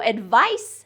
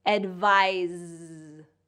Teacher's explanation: the mouth position is the same, but the only difference is one is voiceless and one is voiced